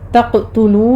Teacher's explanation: تقتلو میں قاف کو ہم قلقلہ کریں گے